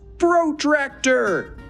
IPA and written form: prəˈtræk.tə (Protractor)